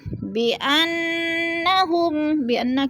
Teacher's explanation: بِأَنَّ کی نون مشدد ہے، سختی سے جمع کر پڑھیں گے